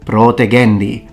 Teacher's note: a word such as protegendi is supposed to have a long o